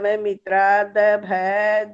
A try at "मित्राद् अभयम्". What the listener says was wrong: देखो ना, भय भय करते जा रहे हो, ऊपर बिंदी जहाँ पर है वो भी तो बोलना है। मित्राद अभयम, मित्राद अभयम, भय नहीं